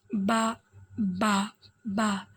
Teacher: दोनों होंठों के तड़े हिस्से से ये अदा होता है। बा। जो हमारी ज़ुबान है देखिए वो हमारे अंदरून का जो होंठ है उसके गिले गिले हिस्से से लग रही है।